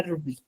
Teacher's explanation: En donde recae la mayor fuerza de voz es en la segunda sílaba, que es bi